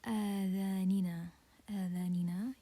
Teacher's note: First thing we have the Hamza, and then we have the mad letter. So this is mad badal, and it's prolonged for 2 counts.